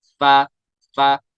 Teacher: फा को अदा करते वक्त एक गलती होती है, वो ये होती है कि दोनों होंठों को मिलाया जाता है। दोनों लिप्स को नहीं आप मिलाएंगे, बल्कि बल्कि नीचे वाले लिप्स और ऊपर वाले दांत, ये मिलाएंगे आप।